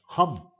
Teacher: Vocal cords apart side होकर के हवा को, लंग से आती हुई हवा को बाहर जाने ही देती हैं, वो साउंड ग्लोटल है। हिंदी का शब्द हम, अब हम में है जब हम बोलते हैं तो एक बिल्कुल खांसी जैसी हवा, तेज हवा हमारे गले से निकलती है, हम, तो वो ग्लोटल का एग्जाम्पल है।